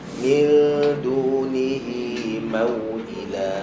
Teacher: Okay, sama juga, jangan min dunihi, tak nak min min dunihi. Okay, dal makhraj dia dekat ujung lidah belakang gigi atas, ataupun kalau nak tepat-tepat dekat gusi, pertemuan gusi dan gigi atas.